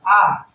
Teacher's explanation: ठीक, तो जिन वर्णों का उच्चारण में, जिन वर्णों के उच्चारण में यानी मुख पूरा खुला रहे, आ का आप उच्चारण करेंगे तो देखेंगे पूरा मुख खुला रहेगा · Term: विवृत